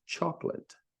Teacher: We go from K, the C, which is pronounced like a K, right to the L